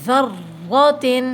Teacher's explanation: اس کو موٹا پڑھتے ہیں، مثقال، ٹھیک ہے، ذرۃ، اب دیکھیں را کے اوپر تشدید ہے، تھوڑا رکیں گے اور سختی کریں گے